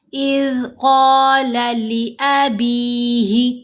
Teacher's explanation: با کے نیچے زیر، ساتھ یا ساکن، یا مدہ ہے، تو با کو ہم نے 2 حرکات کی مقدار یہاں بھی لمبا کر لیا۔